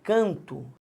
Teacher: Quando eu falo canto, repare, vou pegar o preto para ficar bonitinho. A sílaba tônica é o can.